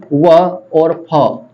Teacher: व और फ के उच्चारण में ऊपर के दांत नीचे के होंठ पर आकर मिलते हैं, इसे हम क्या कहते हैं भाई, दंतोष्ठ्य व्यंजन।